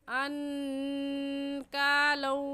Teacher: ان کے نون ساکن پر ہم غنہ کریں گے کیونکہ نون ساکن کے بعد حروف حلقی جو کہ 6 ہیں، حمزہ ہا، عین ہا، غین خا، ان میں سے کوئی لفظ بھی نہیں آیا، اس لیے اس نون ساکن پر ہم غنہ کریں گے۔